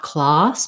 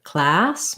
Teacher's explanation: you don't want the ah sound, not class, but class, more forward with the tongue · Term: black cat vowel